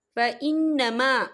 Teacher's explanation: نون مشدد ہے تو یہاں پر غنہ ہوگا